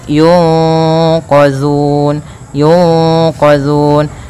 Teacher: cara membacanya yaitu suara nunnya disamarkan kepada huruf q yq ditahan kemudian langkah selanjutnya ditahan gunahnya tidak langsung yunqun tapi · suara nunnya disamarkan kepada huruf qaf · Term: Ikhfa, ikhfa